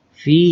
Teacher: Kasroh menghadapi ya mati ini disebut dengan mad tabi'i. Dibacanya panjang 2 harokat.